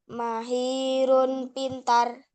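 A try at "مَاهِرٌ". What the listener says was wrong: Ma-nya panjang, coba diulangi.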